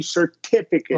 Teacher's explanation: is one uh where that because the syllable is stressed we we're going to do a true T